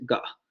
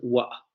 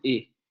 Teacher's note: la glotalización de la T